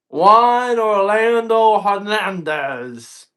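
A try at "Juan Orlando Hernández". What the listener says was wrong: you got to roll the R's.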